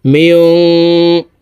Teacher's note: এই নুন সাকিনকে নাকের ভিতরে লুকাইয়া গুন্নার সহিত পড়ব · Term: ইকফা গুন্না